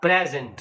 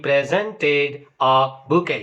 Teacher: Pre is stressed and sent is unstressed.